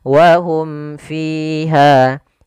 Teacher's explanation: Jelas suara mimnya dan tidak boleh ditahan. Wahum fiha, ya tidak boleh sakta juga, misal wahum fiha enggak, tapi dia langsung aja wahum fiha. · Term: izhar syafawi